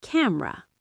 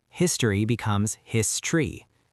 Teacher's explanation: In words like camera, the E disappears. You say camera. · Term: vowel elision